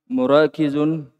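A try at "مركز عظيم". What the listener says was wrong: markazun Tidak dipanjangkan kafnya. Biasa cepat.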